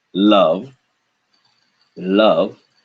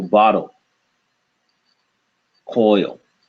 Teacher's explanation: in the second form bottle the back of the tongue actually curves up towards the roof of the mouth to restrict the air